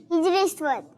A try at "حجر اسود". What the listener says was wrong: ہاں، ہجر اسود، تو ہجر نہیں ہے، ٹھیک ہے، حجر ہے۔ اور اسود کسے کہتے ہیں؟